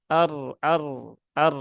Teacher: Dan roknya harus tebal ya, harus tafkhim karena dia berhubungan dengan fathah ya.